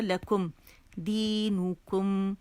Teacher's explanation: میم کو پکڑ لیں گے، ایک کاؤنٹ کا اس میں غنہ ہوگا